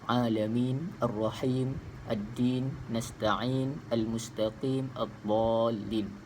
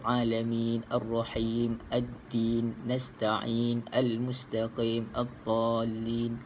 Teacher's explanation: bila kita waqaf atau kita berhentikan bacaan ini, ia akan datangkan sukun ataupun mati pada huruf terakhir, yang mana pada asalnya ia berbaris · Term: mad arid lis sukun